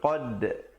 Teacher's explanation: Qad ada pantulan di situ. Qad dan dal bila kita waqa'a, bila kita pantulkan, kita pepeskan mulut